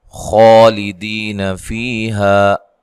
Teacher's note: خا کو موٹا ادا کرنا ہے اور لمبا کرنا ہے، ایک الف کی مقدار کے برابر۔ کھڑی زبر ہے، کھڑی زبر کو مد اصلی، کھڑی زبر، کھڑی زیر اور الٹا پیش کو مد اصلی بھی کہا جاتا ہے، اور ان کی مقدار ایک الف ہوتی ہے۔